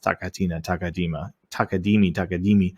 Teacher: ta is in the front of your mouth k is kind of in the middle t goes back up towards the front but higher and na goes um kind of in the middle but up